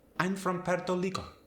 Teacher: A native Spanish speaker from Puerto Rico might not even say the R.